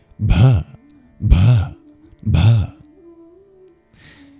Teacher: It's breathy, it's an aspirated b.